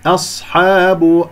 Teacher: بآياتنا أولئك أصحاب الجحيم، أولئك، هذه الواو والصفر المستطيل فوقها تكتب ولا تلفظ، خطأ أن تقول أولئك خطأ، هذه فقط همزة مضمومة، فأولئك وحرف المد والهمزة في كلمة أولئك مد واجب متصل. أصحاب، الهمزة مرققة، الصاد مفخمة مرتبة رابعة لين ساكن